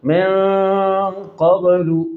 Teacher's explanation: من قبل نون پر اخفا مع الغنہ, قاب کی با پر قلقلہ.